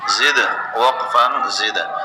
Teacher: دال حروف قلقلہ میں سے ہے، پہلے سے ساکن ہے، اس پر قلقلہ کیا